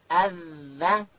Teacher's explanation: ذال ادا کیږي د ژبې سر به د لوړې زامې د مخ د دوو غاښو وسرو ته ورولو.